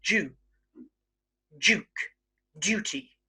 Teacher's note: words that start with du, okay, instead of going due, we often go Jew